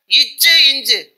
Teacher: நாவின் இடைப்பகுதி அன்னத்தின் இடைப்பகுதியை பொருந்துவதால் உண்டாகிறது